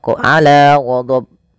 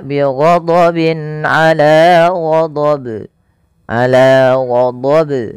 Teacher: Yang benar adalah tidak menambahkan hamzah dan dia harus memantul. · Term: qalqalah kubra